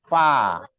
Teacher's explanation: Tapi fa, walaupun dia sama-sama di bibir ya, cuman dia beda, makhrajnya beda. Kalau fa, khusus untuk fa, bertemunya perut bibir bawah dengan gigi seri atas